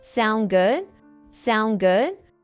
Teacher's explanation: native speakers will often shorten that just to sound good with a rising intonation